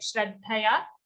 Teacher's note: So the palatal sh, which you are saying in the second shloka, like Shraddhaya, it's like regular in English, how we say shine, show